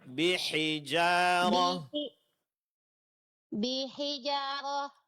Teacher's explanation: Jadi yang dipanjangkan huruf jim bukan huruf ha.